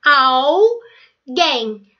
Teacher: A sílaba tônica é a última, então realmente ela é oxítona.